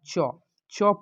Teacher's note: चौ का उच्चारण स्थान देखिए, तालु को स्पर्श कर रहा है ना